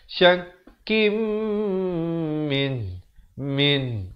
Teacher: Di sini idgham bi gunnah. Tanwin bertemu mim jangan lupa masuk beserta dengung dua harakat.